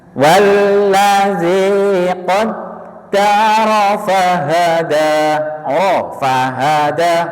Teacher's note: Rnya jangan ragu-ragu. Rnya sempurnakan tebal. Jangan ro ar ro ya.